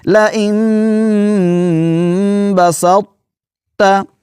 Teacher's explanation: قراء حضرات جو ہیں وہ یہاں پر طا کی صفت اطباق کو باقی رکھتے ہیں، یعنی اس کو تھوڑا سا موٹا کر کے آواز جو ہے اور پھر آگے تا کو پڑھتے ہیں۔